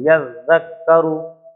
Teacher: زال پر بھی تشدید اور کاف پر بھی تشدید، تو زال کو بھی 2 مرتبہ پڑھیں گے